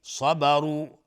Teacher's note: صبروا، را تفخیم هست چون ضمه داره